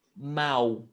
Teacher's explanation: And mal. So when we have L at the end of a word, we don't pronounce the L. We pronounce U